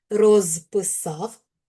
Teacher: Коли ми говоримо повільно розписав, то у нас оглушення не відбувається.